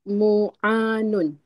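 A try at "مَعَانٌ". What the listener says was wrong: Ma'nya fathah. Kalau mujarad fathah, ma.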